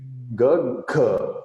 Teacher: I have to first vibrate my vocal cord. So this thing starts vibrating.